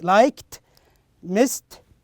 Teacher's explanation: there is no vibration you cannot feel the vibration in your throat so in this case we pronounce it as t sound so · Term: voiceless